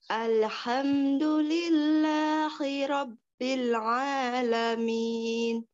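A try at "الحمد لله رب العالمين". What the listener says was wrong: Iya, sudah bagus. Itu lebih baik ya.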